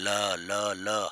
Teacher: हवा जीभ के दोनों किनारों से यानी पार्श्व से, किनारे से, साइड से गुजरती है। ल ल ल हवा दोनों साइड से गुजरेगी, इसलिए इसको हम पार्श्विक व्यंजन कहते हैं।